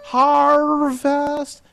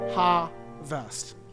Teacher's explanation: can you cut out the r don't sing in r